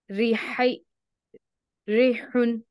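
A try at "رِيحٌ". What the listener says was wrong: इसको या मत करके बोलिए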